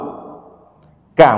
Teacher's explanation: Huruf kaf itu dia tidak berat. Kenapa tidak berat? Karena dia bukan huruf tebal.